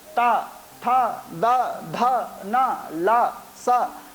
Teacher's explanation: जैसे कि दंत स्थानीय जो वर्ण हैं, आप बोल करके देखें, लरी, हमें दांत, अपनी जिह्वा को दांतों में स्पर्श करना पड़ता है, ता, था, दा, धा, ना, ला, सा। तो इन वर्णों का उच्चारण करते समय हमें अपनी जिह्वा को दंत में स्पर्श करना पड़ता है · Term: दंत वर्ण